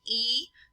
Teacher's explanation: we have a fairly flat line in the lips, so these are not rounded. And then we have oo, which is a rounded vowel.